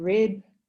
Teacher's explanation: We have a word like rip, and the vowel is relatively short before p. And in rib, where the word has a final voiced consonant, there the vowel is relatively long.